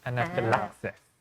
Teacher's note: anaphylaxis with the stress on the 4th syllable